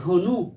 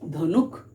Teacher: অন্ত ব্যঞ্জন ধ্বনির আগম কি না, ধনু, আমরা উচ্চারণ করি কি ধনুক, তাহলে শব্দের শেষে ক ব্যঞ্জন ধ্বনির আগমন ঘটেছে